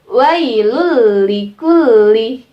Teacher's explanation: Jadi dimasukkan tanwin dan nun sukun nya dengan huruf idgam bilagunnah nya tapi dimasukkan tanpa berdengung ya tanpa berdengung satu harokat tidak perlu dipanjangkan tidak perlu hidungnya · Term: idgham bilagunnah